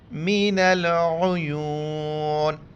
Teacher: عیونی وقف کریں گے تو واو مدہ ہے، تھوڑا کھینچیں گے